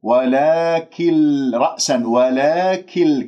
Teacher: النون الساكنة بعدها لام إدغام بغير غنة، آكل النون